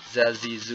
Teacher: Jadi salah satu sifat huruf za itu adalah sofir. Jadi suaranya tajam. Ya, sangat mirip dengan huruf Z-nya bahasa Indonesia ya.